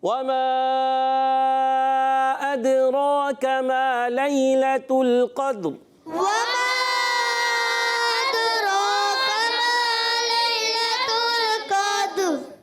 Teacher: قاف کو پر رکھنا ہے اور دال کو ساکن کلکلا ادا کریں گے، را کو پھر پر کر دیں گے